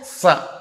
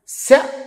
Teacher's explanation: సకారం దంత్యం శకారం తాలవ్యం